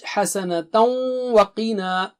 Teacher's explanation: Qi is thick and high. And na has mad there.